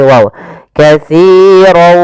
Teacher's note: kita memasukkan tanwinnya kepada huruf wau ya. Kemudian ditahan disertai dengan ghunah atau idgham alghunah. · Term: idgham bighunah